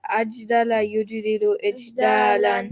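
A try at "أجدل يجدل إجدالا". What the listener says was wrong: Brilliant. That's it.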